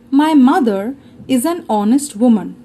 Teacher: the h of honest is silent and we pronounce the word with the vowel sound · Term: silent h